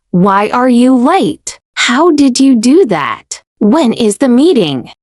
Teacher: All of these have falling intonation. Your voice comes down slightly at the end, giving the sentence a clear, complete feeling.